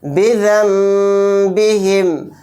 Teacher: یہاں پر نون کو سائلنٹ کر دیں گے، ذال کے ساتھ چھوٹا میم ملا کر غنہ اور اخفا کے ساتھ پڑھیں گے ، بذم با زیر بی بذم بی ہا میم زیر ہم